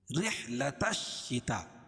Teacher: اس لیے کہ الف لام کے بعد حروف شمسی کے 14 حرفوں میں سے شین ہے، تو یہ لام نہیں پڑھی جائے گی. تا کو ڈائریکٹ شین میں ملائیں گے، اور شین کے اوپر تشدید ہے، تشدید کو سختی کے ساتھ پڑھیں گے. · تا کو ڈائریکٹ شین میں ملائیں گے، اور شین کے اوپر تشدید ہے، تشدید کو سختی کے ساتھ پڑھیں گے. تا رحلۃ الشتاء مد متصل ہے، کیونکہ حروف مدہ کے بعد حمزہ اسی کلمے میں ہو.